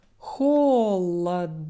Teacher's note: if my vowel is open at the end it now opens up a bit and sounds more like ah